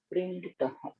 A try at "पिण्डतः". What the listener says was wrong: Not pinditah. That's not pindi. यथा मृत पिंडतः.